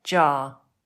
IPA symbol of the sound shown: ʤ